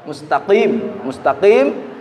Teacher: termasuk lisan pangkal ya atau Pangkal lisan yang dekat ke tenggorokan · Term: huruf qaf